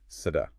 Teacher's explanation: when you add an ending, like in the genitive form sada, you hear that voice D coming back